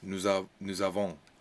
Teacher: we have liaison between S and A, and the N and the S are definitely not going to be said